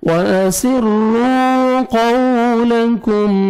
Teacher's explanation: قاف کو موٹا کر کے پڑھنا ہے، واو پہ لپس کو راؤنڈ میں لے کے جانا ہے